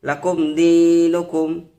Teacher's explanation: তো দেখতে পাচ্ছেন এখানে মিম সাকিনের পর দাল এসেছে, এই জন্য এটা ইজহারের স্বাভাবিক করে পড়ব।